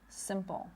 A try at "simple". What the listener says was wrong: Right, your tongue is a little too low. You want to raise it a little bit, not some, but sim.